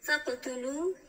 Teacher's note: فقتلوا اینجا میبینیم که قاف ساکن است، قلقله صورت میگیره و واو ساکن مقابل پیش مد اصلی است.